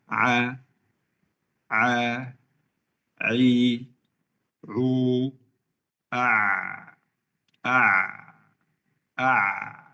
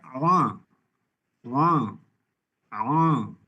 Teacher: jangan menggunakan hidung saat mengucapkan huruf ain